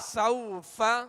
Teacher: سین واو زبر سو، فا زبر فا، سوف، حروف لین کو نرمی کے ساتھ ادا کرنا ہے، بغیر کھینچے، بغیر جھٹکا دیے